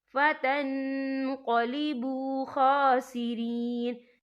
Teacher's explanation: یا دیکھیں فتن، یہاں نون ساکن ہے، نون ساکن کے بعد جو ہے قوف آ رہا ہے، اور قوف جو ہے افا کا ورڈ ہے تو ہم یہاں افا کریں گے، نون ساکن کی آواز کو ناک میں چھپائیں گے